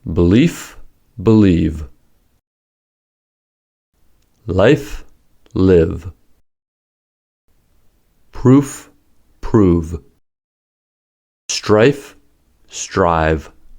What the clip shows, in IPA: f to v